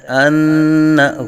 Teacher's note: نون مشدد میں ہمیشہ غنہ ہوتا ہے، ان غنہ کی مقدار ایک الف تک